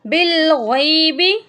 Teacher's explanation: با کو لمبا نہیں کریں گے، بالغیبی نہیں پڑھیں گے